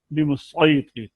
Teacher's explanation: یہاں پر آپ نے سین کو فالو نہیں کرنا، صاد کو پڑھنا ہے